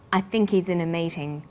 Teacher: The word think is stressed in this sentence, and he's is unstressed. When these words are linked, the H is dropped.